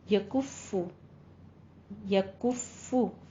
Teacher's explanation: फा के पर तशदीद है, होंठों को गोल करके अदा करना है।